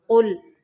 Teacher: قاف کو موٹا پڑھنا ہے اور لام کو باریک پڑھنا ہے